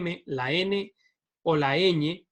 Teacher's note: el aire sale por la nariz porque el velo del paladar se separa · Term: consonantes nasales